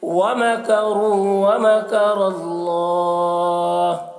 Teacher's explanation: را کو پر پڑھیں گے، را کے اوپر پیش ہے. ومکر اللہ یہاں پر بھی را کو پر پڑھیں گے، را کے اوپر زبر ہے.